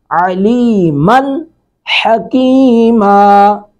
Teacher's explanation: من، میم پر تنوین ہے، نون تنوین کے بعد ہا، تو یہاں پہ ہا حروف اظہار میں سے ہے تو یہاں پہ اظہار کریں گے یعنی من نون تنوین کو بالکل ظاہر کر کے پڑھیں گے